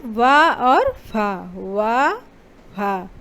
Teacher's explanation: ओठों के साथ साथ दांतों का भी हल्का प्रयोग इसमें हो रहा है। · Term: दंतोष्ठ